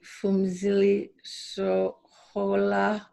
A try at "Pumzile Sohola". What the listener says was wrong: It's actually the H is silent. You say the P. Pumzile. Everybody always get the F because, you know, it has a PH.